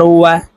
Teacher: প্রিয় দর্শক, এই ওয়াও হরফ ঠোঁট গোল করে উচ্চারণ করতে হবে